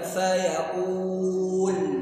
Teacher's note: Lam makhrajnya di mana? Ya, lidah bagian depan dengan langit bagian atas, bukan pada mencucunya.